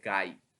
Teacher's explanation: আ এবং ই একসাথে উচ্চারিত হয়েছে তাই এটাকে বলা হয় যৌগিক স্বরধ্বনি